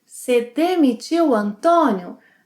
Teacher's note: shortens você to se